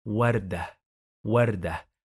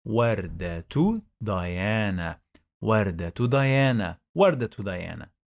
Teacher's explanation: But as I'm going to continue the phrase, I must pronounce the ta with dhamma.